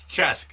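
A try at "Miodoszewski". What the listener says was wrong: You're putting a K at the end. It's just, say it SS. S at the Chess. Chess.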